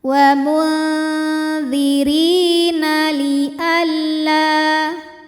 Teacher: Ri mad tabi'i zahiri sebab ada ya sukun didahului baris kasrah, maka huruf ra panjang 2 harokat.